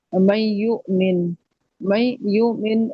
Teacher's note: ادغام مع الغنہ ان کے غنہ کر کے ادغام کرنا، 2 سے 3 حرکات تک ناک میں آواز کو رکھنا، یہ غنہ ہوگا